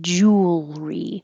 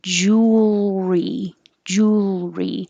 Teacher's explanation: jewelry we don't say jewelry as three syllables we shorten it drop the middle one and say jewelry so you're going from the l to the r